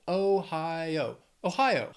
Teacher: Three syllables, stress is on that second syllable.